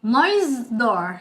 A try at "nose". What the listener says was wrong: No. It's not a noise. Noise is ses. Nose. Nose. No, it's not correct. It's not even close. It's nostril. It's nostril. Nostril. Nostril.